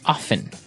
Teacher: They kind of leave out the strong T sound while other people say often.